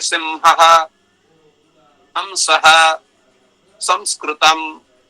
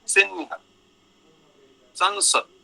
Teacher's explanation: दक्षिण भारत में शल प्रत्याहार पर रहते उस अनुस्वार का उच्चारण मकार सदृश होता है, जैसे सिंहः, हंसः, संस्कृतम आदि ऐसा उच्चारण करते हैं।